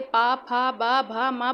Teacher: जो पा वर्ग का उच्चारण है वो होष्ठ से होता है। जब आप पा बोलते, पा, फा, बा, भा, मा बोलते, तो आपके होष्ठ आपस में मिलते हैं।